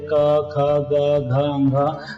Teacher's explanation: तो हम लोग यहाँ देख रहे हैं कि कवर्ग हम लोग लिखे थे क ख ग घ घ, तो ये जो हमारा जो है कवर्ग का उच्चारण कंठ से हो जाता है। क्लियर, एकदम कहीं डाउट नहीं।